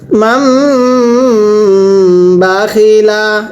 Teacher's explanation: মিম সাকিনের পরে বা থাকলে মিম সাকিন গুণনা করে পড়তে হয়